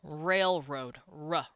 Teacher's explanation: It's one of the hardest letters anyone's ever going to pronounce, and it sounds a little bit like a w, but you're pushing it into your tongue, which is a really weird way to say an R, but that's just how we do it. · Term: English's R